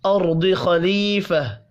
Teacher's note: را ضاد اور خا پر پڑھے جائیں گے